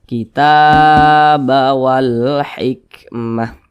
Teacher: ini huruf Ta di atasnya ada Alif kecil maka huruf ta dibaca panjang Mad Thobi'i panjangnya dua harakat atau kira-kira dua ketukan